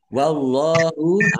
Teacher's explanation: Allahnya dibaca tebal karena harakat di depannya fathah.